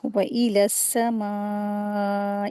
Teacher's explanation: व समाई यहां पर मीम के ऊपर मदे वाजिब हो रहा है। चार हरकात खींचेंगे। व समा इस तरह से इसको रीडिंग करेंगे। · یہاں پر میم کے اوپر مد واجب ہو رہا ہے، 4 حرکات کھینچیں گے